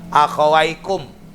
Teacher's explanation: Di sini mim mati ketemu wau, maka akhawaikum bacanya jelas. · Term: ijhar sapawi